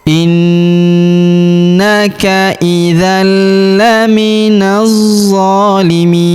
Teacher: Huruf mi kita panjangkan 2, 4 atau 6 harokat karena di depan huruf mi terdapat ia sukun sebelum huruf pemberhentian, dan huruf pemberhentian huruf na kita sukunkan atau kita matikan.